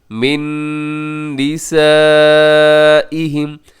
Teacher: یؤلون، اگر ہم اس کے ہجے کریں گے تو ہم ایسے ہجے کریں گے، یا پیش حمزہ یو، لام پیش واو لو، آگے جو واو مدہ ہے، یؤلو، نون زبر نا، یؤلون، اور آگے من نسائہم، یہاں پہ من نساء میں نون ساکن ہے اور نون ساکن کے بعد پھر نون آگے، تو یہاں پہ ادغام ہوگا کیونکہ نون ساکن کے بعد نون یرملون کا ہے۔